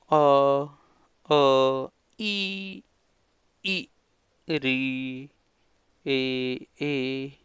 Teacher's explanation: अपने होठों की जो आकृति है वो गोल नहीं हो रही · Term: अवृत्ताकार